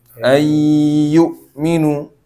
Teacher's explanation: ayyukminu itu ditahan sedikit dua harakat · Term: idgham